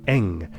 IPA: ŋ